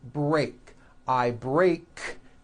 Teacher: break I break break ends with an unvoiced k sound CK there's no voicing on that K